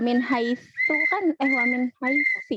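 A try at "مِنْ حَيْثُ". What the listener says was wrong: Kurang monyong domahnya.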